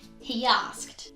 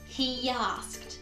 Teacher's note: the e sound and asks he begins with a vowel so we have that intruding j or the y sound between those two